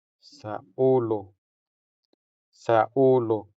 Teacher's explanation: Since this o sound is stressed, it sounds longer than the unstressed o.